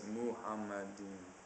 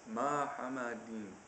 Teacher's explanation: It's supposed to be Muhammadim. The M sound is not elongated, and there's no U in the first syllable.